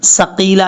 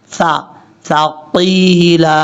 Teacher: سا کو پڑھتے ہوئے سیٹی نہیں آنی چاہیے